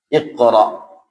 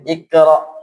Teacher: Jadi pantulannya qaf ini harus ada isti'alanya, harus ada unsur ketebalan hurufnya. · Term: qalqalahnya qaf